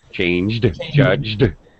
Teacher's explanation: you're going straight from the G sound to the D sound